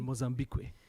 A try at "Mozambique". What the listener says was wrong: you don't pronounce it's not que it's just mozambique